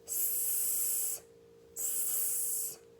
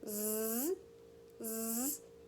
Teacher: And this one we can remind our kids to turn their voice on as well. For the S, our voice is off. For the Z, our voice is on.